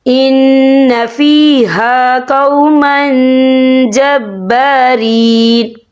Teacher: قالوا یا موسیٰ ان فیہا قوما جبارین، یہ دیکھیں ان فیہا قوما، من یہاں میم کے اوپر تنوین ہے، تنوین کے بعد جو ہے جیم آ رہا ہے، اور جیم جو ہے افا کا ورڈ ہے، تو ہم یہاں افا کریں گے، تنوین کی آواز کو ناک میں چھپائیں گے۔